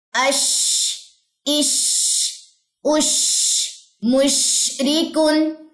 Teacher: شین میں تفشی کی بھی صفت ہے، آواز پھیلے گی بھی